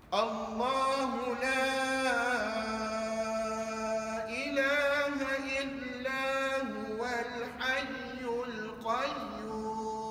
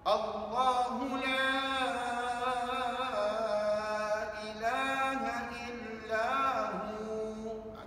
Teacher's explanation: Jadi puan-puan, rupa-rupanya kalau kita baca setakat Allahu la ilaha illa huwa pun dah memadai. Dah cukup nak menunjukkan la di sini adalah mak. La di sini adalah mak ta'zim. Berapa harakat? 6 harakat.